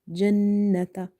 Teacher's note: we will do the ghunna or nasalization in the noon sound because there is a shadda on top of it. So if you open this shadda, you will see a noon sakin and a noon with a fatha.